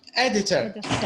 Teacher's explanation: It's three syllables. So we have editor, and the first one is stressed.